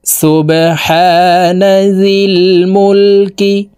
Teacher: এই বা কলকলার হরফ নিচের দিকে ধাবিত করে ধাক্কা দিয়ে উচ্চারণ করব।